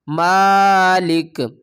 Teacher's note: میم کھڑا زبر ما، میم کھڑا زبر ما، لام زیر لی، یہ کیا بن گیا، مالی، مالی، کاف زیر کی، مالکی، مالکی، آگے وقف، مالک. اس کو میم کو ہم ایک الف کی مقدار کھینچیں گے، زیر کو ہم نے نہیں کھینچنا، مالک. شین یا زبر شیب، یہ بھی حروف مدہ ہے، تھوڑا سا جلدی کے ساتھ پڑھیں گے، شیب، حمزہ دو زیر ان، شیئن، آگے وقف، شیب، شیب.